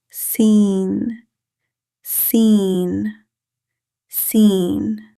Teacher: The articulation of seen is the tip of the tongue near the lower front teeth. Air flows smoothly while pronouncing seen.